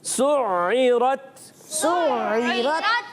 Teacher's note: सीन की अदायगी सीटी के साथ आइन को हलक के दरमियान वाले हिस्से से